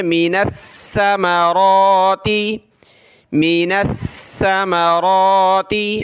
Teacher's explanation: ثا پہ ہم نے زبان نکالنی ہوتی ہے تھوڑی سی